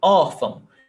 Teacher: we have 2 syllables, órfão, and the stressed syllable is ó. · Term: paroxítona